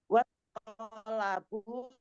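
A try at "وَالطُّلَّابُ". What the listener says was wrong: Watulla bukan to tapi domah. Tulla tu.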